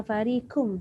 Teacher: Kalau kita sebut farikum kum tu nipis.